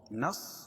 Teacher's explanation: صاد کو موٹا پڑھیں گے کیونکہ حروف مستعلیہ میں سے ہے